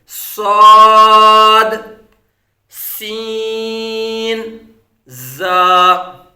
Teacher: सीटी की तरह तेज आवाज निकलती है